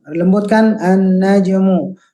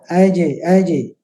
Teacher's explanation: Memang kesempurnaan pada pantulan jim khususnya itu adalah kesempurnaan makhrajnya dulu, keluar dari tempatnya dulu ya, tengah lidah, aj. Nah, itu akan mengalirkan pantulan yang sempurna begitu ya, tidak pecah ya.